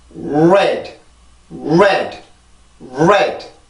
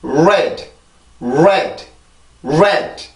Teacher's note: 다르기는 한데 요거는 알발음의 특징이죠. 음절의 시작이 있을 때 입술이 나온 상태로 소리가 시작이 되고 내가 여기에서 이 모음까지 가기 위한 힘을 요거에서 알발음에서 받는단 말이에요.